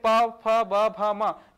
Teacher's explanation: प भ म ये होठों से उच्चारित हो रहा है। होंठ का प्रयोग हो रहा है इनके उच्चारण में। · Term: ओष्ठ ध्वनियां